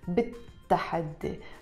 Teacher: We drop the lam sound and we pronounce it بالتحدي because the word تحدي starts with the ta and the ta is a sun letter